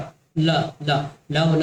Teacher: श्र ल ल ल ल बोल के देख लीजिए, जीभ कहीं ना कहीं दांत से जाकर टकरा रहा है, चाहे ऊपर से टकरा है या नीचे से टकरा है।